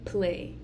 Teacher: stop plosive bilabial, which we'll be using our lips, and it's going to be the p sound, as in play.